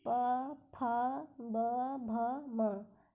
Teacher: ये ओष्ठ से निकलने वाली वर्ण है।